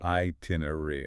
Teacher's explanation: Hear that stress on the second syllable.